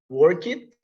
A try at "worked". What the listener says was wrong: Worked, okay? After the K sound, the T, with T, exactly. Worked, okay?